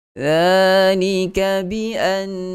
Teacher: nun sabdu tentu sekali padanya adalah hukum wajibul ghunnah, wajib dengung, mesti dengung, yang mana kadar tahap dengung ini adalah ghunnah yang paling sempurna.